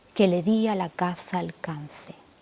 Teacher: la repetición de la vocal más abierta y del sonido de la consonante fricativa